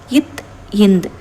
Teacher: இத்து இந்து இவ்விரண்டு எழுத்தும் நாவின் நுனி மேல்வாய் பல்லின் அடிப்பகுதியை தொடுவதால் பிறக்கின்றன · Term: இணை எழுத்துக்கள்